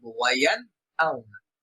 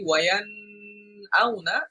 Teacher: নুন সাকিন বা তানবিনকে গুণনা ছাড়া স্পষ্ট করে পড়ব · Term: ইজহার